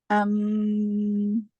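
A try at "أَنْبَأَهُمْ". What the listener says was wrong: Oke, sama tipisnya bedanya adalah bibir nggak rapat. Rapatkan. Kasih furjah celah dan sama tipis. Mim ketemu ba ikhfa syafawi.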